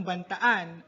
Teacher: ang salitang bantaan ay mula sa salitang ugat na banta na may impit sa huling pantig